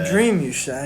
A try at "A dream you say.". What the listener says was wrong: With downward intonation is how you say that. You can't get your intonation down.